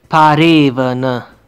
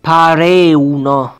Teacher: in this dialect, the schwa sound is replaced with the u sound